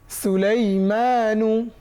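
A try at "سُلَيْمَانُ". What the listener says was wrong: আচ্ছা, মানু, সুলাইমানু, মানু, মাতে কয় আলিফ টেনেছি? কিন্তু মদের হরফ তো এক আলিফ মাত্র, তা মদের হরফের বাম পাশে নুনতে থামছি, এখন কয় আলিফ টানতে হবে? 3 আলিফ। এটাকে বলে মধ্যে আরজি। আরজি মানে রূপান্তরিত মদ বা পরিবর্তিত মদ। সুলাইমান। 3 আলিফ।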